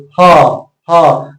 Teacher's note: ह बोलेंगे ह ह तो आपका आवाज किस से आ रहा है कंठ से आ रहा है